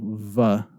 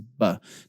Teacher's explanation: your lips don't touch, and you have some kind of friction in the air as you make the sound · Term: fricative